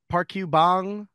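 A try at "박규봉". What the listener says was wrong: Yeah, it's Park Kubong, which works in any language basically, but it's like Pakyu, right? So in Korean, it's not park you, it's pak you.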